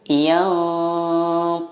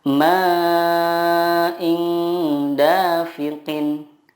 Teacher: Yang dimaksud dengan menyamarkan di sini adalah ketika kita mendengungkan atau menyamarkan nun sukun itu, lidah kita sudah siap ke huruf berikutnya. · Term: ikhfa hakiki